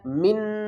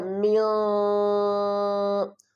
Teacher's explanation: یہاں پر ہم گنہ نہیں کریں گے اور نہ ہی ہم اس پر اظہار کریں گے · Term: اخفا